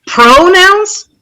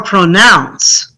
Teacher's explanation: We want to stress the second syllable.